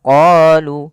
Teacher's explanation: Pada lafal bacaan qoluana kita memanjangkan huruf qo sepanjang dua harakat karena pada lafal qo ini ada bacaan mad thbi'i. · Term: mad tabi'i